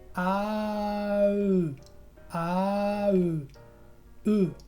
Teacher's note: pronunciar una A, como si fuera una A, y después ir cerrando la boca hasta tener una boca redondita y en la forma de un beso